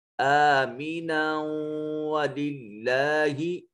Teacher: اس میں جلالت کو مرقق یعنی باریک پڑھا جائے گا